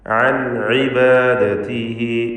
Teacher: സാക്കിനത്തായ നൂൻ ശേഷം ഐൻ ഇദ്ഹാർ ഹൽഖി നൽകി മണിക്കാതെ നൂനിനെ വെളിവാക്കുക. ഇബാദതിഹി എന്നതിലെ ദീർഘം മദ്ദുസ്സിലത്ത് സൂറ, രണ്ട് ഹറക്കത്തിൻ്റെ അളവിൽ ഹായിനെ ദീർഘിപ്പിക്കുക.